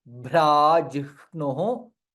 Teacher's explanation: भा is Mahaprana and it is Dirgha.